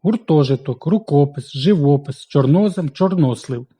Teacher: означає міряю А що саме міряє вказую У першій частині слова складні слова зі сполучником о наголошуються звичайно ж на о